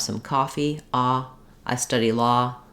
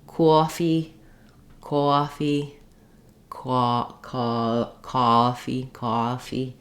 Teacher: Coffee is going to become more of a diphthong in the New York accent of aw, either starting with the ah and ending with schwa, or with an o or an sound.